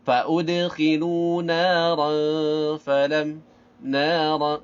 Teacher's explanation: Dengungnya dengung ikhfa karena bertemu dengan fa.